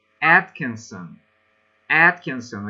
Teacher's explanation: with an accent on the first syllable